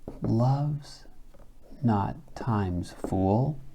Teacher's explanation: remember stress is relative and so in this case love's not is strong weak · shakespeare will often use a trokey on the first foot to create a strong weak weak strong sound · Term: trochaic inversion